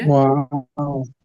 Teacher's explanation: দেখেন, এই উচ্চারণে কি কি হয়। প্রথমে ওয়া বলে যে শুরু করা হয়, তখন আপনার দুই ঠোঁট গোল থাকে